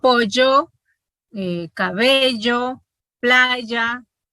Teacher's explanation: como la Y, sonido fricativo palatal sonoro